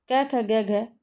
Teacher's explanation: यह व्यंजन कंठ से होते हैं। तो यहां पे कोमल तालव्य आया हुआ है।